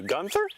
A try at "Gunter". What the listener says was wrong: It's Gunter, no H. Trust me, it's Gunter.